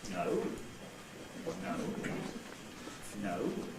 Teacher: You start mid-pitch, or maybe even quite low pitch, and then rise to quite high and fall again within the same syllable. So on the syllable no, we have no, no, no. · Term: Rise fall